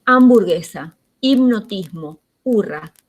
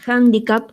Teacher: La H está muda, pero en otras palabras, por ejemplo en handicap, que es una palabra que también proviene del inglés, ahí suena la H suena como una J, aparece como una H aspirada